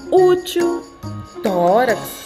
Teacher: paroxítonas sílaba tônica é a penúltima